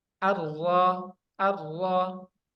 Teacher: awal punggung ujung lidah pada posisi gusi dua gigi seri atas, yaitu huruf ro. Nah, dia ini ujung lidah ini pada posisi pada posisi gusi.